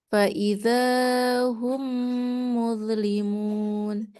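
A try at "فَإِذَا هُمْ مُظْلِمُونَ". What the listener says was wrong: Iya. Fa'idha hum, zalnya awas, hati-hati kepanjangan. Sekali lagi.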